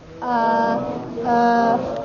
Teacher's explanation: a half tone that's very low